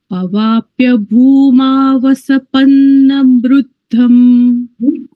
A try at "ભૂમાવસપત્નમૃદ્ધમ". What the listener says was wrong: પત્ન છે, પત્ન, પન્ન નથી.